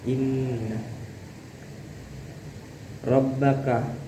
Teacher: inna ini bacaannya gunnah. Jadi bacanya itu harus didengungkan. Kira-kira 3 rakaat.